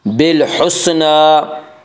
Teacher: نون کے اوپر کھڑا زبر ہے، کھڑا زبر کو ایک الف کے برابر کھینچ کر پڑھیں گے۔